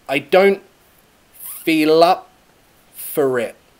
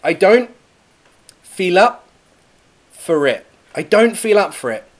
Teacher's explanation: that L goes into the feel up for it, lup for it. And the R goes to the next word, writ. I don't feel up for it.